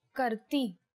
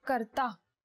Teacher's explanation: the last vowel changes it is e for females and ah for males